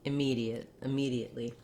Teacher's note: So for immediately, my tongue is more central than it is for the I. For the reduced vowel, I can be kind of anywhere in that range between I and and it's not an exact vowel. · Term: reduced schwa